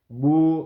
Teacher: اب ہم نے کیا با واو پیش بو. اب بو کی صورت میں ہونٹ گول ہوئے لیکن بو اس صورت میں آواز یہ منہ کے خالی حصے سے آتی ہے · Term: حروف مدہ